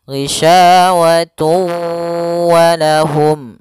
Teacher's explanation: di sini ada idgham bighunah, yaitu adanya tanwin un bertemu dengan huruf wau